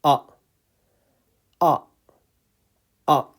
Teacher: So it's al-hamza, al-hamza, al-hamza, and the sound is a, a, a. The sound is coming from the bottom of your throat with your mouth slightly open.